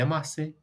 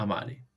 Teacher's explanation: Esto se anota así, posición intervocálica, vocal, espacio vocal. Como esta S queda en posición intervocálica, se sonoriza, sufre un proceso fonético que hace que cambie a R. Este cambio de S a R tiene un nombre técnico, se llama rotacismo.